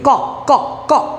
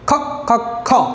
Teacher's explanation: ক হচ্ছে অল্প প্রাণ আর খ হচ্ছে মহাপ্রাণ